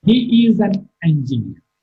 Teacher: Engineer is marked with a falling tone.